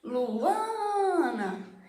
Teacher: a sílaba mais forte é o A, Ana. Então a sílaba tônica do meu nome é o A.